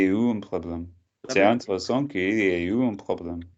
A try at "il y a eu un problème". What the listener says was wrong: Try and say it smoothly. It's not like Kyrie eleison. Like say like il y a eu un problème.